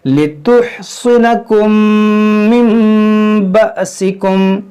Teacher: यहाँ पर हमजा साकिना है, इसको झटका देकर पढ़ेंगे